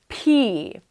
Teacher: the P sound is a sound where we do not use our voice but we do use our breath so the P This is different from B Where we do